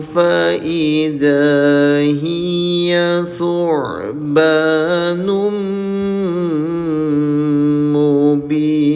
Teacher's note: alqa asahu faidza hiya subbanum mubin tanwin atau domatain berjumpa dengan huruf mim namanya idgham biguna dengungkan selama dua harakat